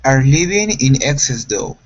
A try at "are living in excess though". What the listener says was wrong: instead of lee it's short i